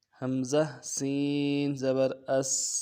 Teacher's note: حمزہ سین زبر اس، سین سیٹی پوری ادا کرنا ہے اور سیٹی باریک ہوگی۔ سین کا مخرج ہے دونوں دانتوں کو ملانا ہے اوپر اور نیچے کے، اور بیچ میں سے ہوا نکلے گی سیٹی کی۔